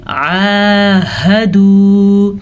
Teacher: یہ سینے سے نکلتا ہے، حلق کے آخری حصے سے نکلتا ہے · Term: ہا